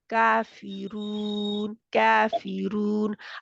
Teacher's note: آپ دیکھیں جو را ہے نا کافرون کی، یہ را موٹی رہے گی